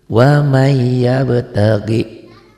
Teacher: Ternyata ini nun matinya ketemu ya, berarti n-nya berubah jadi y tuh ya. Nun matinya berubah menjadi y. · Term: idgham bi gunnah